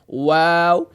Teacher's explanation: ناظرین واو کا مخرج آپ کو بتایا تھا کہ واو کا مخرج یہ حروف شفویہ میں سے ہے اور اس کی ادائیگی دونوں ہونٹوں کے گول کرنے سے ادا ہوتا ہے